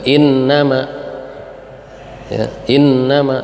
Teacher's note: Innama ditahan sampai 2 harokat. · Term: gunnah